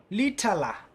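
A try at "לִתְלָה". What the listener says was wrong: So we would pause on the shva. We'd go lit, la, lit, la.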